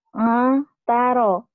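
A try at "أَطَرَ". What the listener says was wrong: Ataro lah. Jangan dipisahkan. Udah, ya udah nyambung. Jangan dipisahin. Jangan dipisahin.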